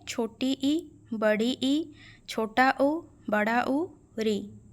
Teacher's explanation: अगर विवृत एक मतलब ऐसे स्वर हैं जिनमें क्या है, उच्चारण करते समय मुख पूर्ण रूप से खुल जाता है, तो संवृत उसका उल्टा है। मतलब संवृत स्वर जो हैं इनके उच्चारण करते समय मुख प्रायः बंद सा रहता है